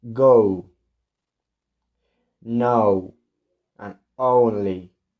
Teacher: the main difference here is the shape of the lips, rounding a little as we say the sound. Okay, starting on the and finish on the u or oo.